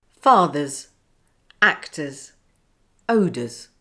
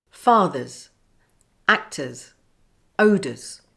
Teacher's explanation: the r is always silent at the end of a word the S follows the weak vowel sound uh before the silent r